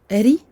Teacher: Ra, kasra, ri, donc on amincit le ri, parce qu'il porte une kasra.